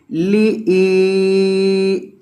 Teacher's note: حمزہ کو آپ نے لمبا کرنا ہے کیونکہ حمزہ کے بعد یا مدہ ہے۔ لی ای، لام کھڑی زبر لا، لام کو بھی لمبا کریں کیونکہ لام کے اوپر کھڑا زبر ہے، اس وجہ سے آپ نے لام کو ایک الف کی مقدار لمبا کرنا ہے۔